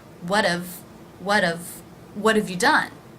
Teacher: example what have you done what have you done notice that the H is dropped in half and the vowel is actually reduced from aa to the schwa of that is how we're pronouncing the word have in the